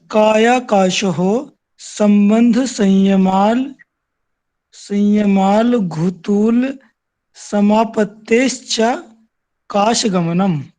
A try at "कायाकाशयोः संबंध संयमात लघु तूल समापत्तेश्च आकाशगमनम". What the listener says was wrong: काय आकाशयोः संबंध संयमात। यहाँ ना संयमात, ये जो आधा ला है इसे आधा त मानिए। संयमात, फिर बोलिए लघु, फिर तूल, लघु तूल, फिर समापत्तेश्च, समापत्तेश्च आकाशगमनम।